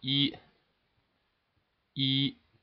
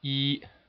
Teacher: constant tone all the way at the level five so start up at five and draw a straight line across · is how we write it first tone in pinion and uh it goes from level five and it ends at level five at the end of the tone